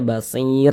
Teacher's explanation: Kita kalau berhenti atau berwakaf tepat di huruf ro kita baca basir begitu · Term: disukunkan